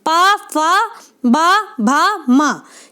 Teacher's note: अगर हम देखें तो प सबसे ऊपर आ रहा है और सबसे ऊपर वाला अगर हम डायग्राम के अकॉर्डिंग चले तो क्या था भाग, ओष्ठ था, ठीक है। तो ओष्ठ्य ध्वनि में आती है प वर्ग की ध्वनि